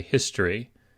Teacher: if you pronounce it, you don't really pronounce the O. You say history. It reduces.